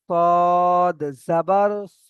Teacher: এখানে কিন্তু সদ জাবার সা হবে না, আকার উচ্চারণ হবে না, মুখ গোল করে পড়তে হবে স।